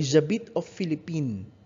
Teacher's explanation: You pronounce it as Philippine without an S.